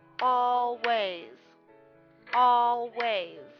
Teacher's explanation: notice that the S at the end takes the place of the Z